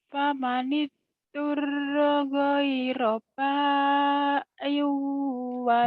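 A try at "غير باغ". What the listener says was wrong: Bagil bukan ba'il. Itu ada titiknya. Bagil. Again, gin. Bagil.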